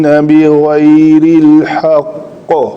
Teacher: قاف کو میں نے ساکن کیا خود، قاف کے نیچے کسرہ تھی، جب اس کو خود ساکن کیا تو اس کے اوپر کلکلا کرنا ہے